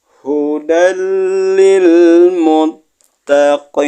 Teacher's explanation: di depannya ada lam bertasdid maka jadinya hudal namanya idgham Bila gunah